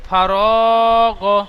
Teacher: ফারগ পড়াটি সর্বপ্রথম বানান করবেন, ফা জাবার ফা, র আলিফ জাবার র, রটি আলিফ মাদ্দা 1 আলিফ টান দেবেন, র আলিফ জাবার র, ফার, গইন জাবার গ, ফার গ, মাঝখানে রটি টান হবে, 2 ধারে ফা এবং গইন টান হবে না